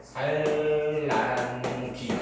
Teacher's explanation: 니은이 리을로 바뀐 유음화가 일어났다는 걸 알 수 있습니다